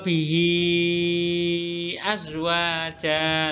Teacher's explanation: Nah, ini mat silah tawila, bacanya panjang, ya.